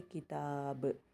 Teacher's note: اگر یہاں پر روک رہے ہیں تو با پہ خلخلہ دے کر، تنوین اڑا کر با پہ خلخلہ دے دیں گے اور اس کو کہیں گے کتاب۔